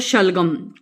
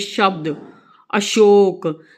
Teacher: जब हम इनका उच्चारण करते हैं तो हमें महसूस होता है कि हमारी जीभ का भाग, आगे का भाग तालू को स्पर्श कर रहा है।